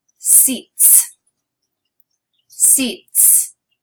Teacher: It ends with a T. So we're going to add the voiceless S.